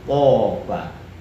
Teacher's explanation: Kalau toba suara A yang terpengaruh dengan to itu tafkhim.